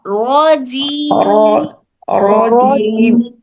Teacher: double voice نہیں آنا را کی، صرف را